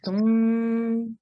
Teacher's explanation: So nun gunna, we're going to make a nasal sound.